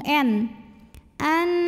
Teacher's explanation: karena ada nun sukun bertemu dengan huruf nun maka Nun pertama dileburkan ke Nun kedua disertai bunyi dengung n an Dan ini boleh juga disebut dengan Idgham mutamah silain